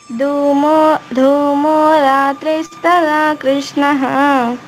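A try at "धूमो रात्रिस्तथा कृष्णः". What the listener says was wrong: ఈ రెండిట్లో ఉంది ఒత్తు. ధూమో వస్తుంది, తథాలో వస్తుంది. అక్కడ దక్షిణాయనంలో కింద ఒత్తులేదు.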